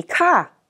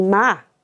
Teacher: But you will also hear local pronunciations which are slightly different. For instance, cae would be ca, and mai would be ma.